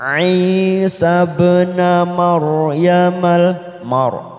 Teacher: ra sukun didahului fathah, kita baca tafkhim yaitu tebal.